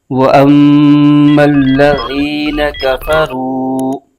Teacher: لام پر زبر ہے، بغیر کھینچے پڑھیں گے، ذال کے نیچے زیر ہے اور آگے یا ساکن، تو یہاں پر یا مدہ ہو رہا ہے، اس کو ایک الف کھینچ کے پڑھیں گے